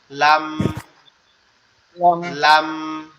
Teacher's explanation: জিহ্বার মাথাটা উপরের তালুর সঙ্গে হালকা করে লাগবে, লেগে আওয়াজ হবে লাম।